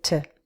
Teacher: To is reduced because it's not stressed, so I say t. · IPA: /tə/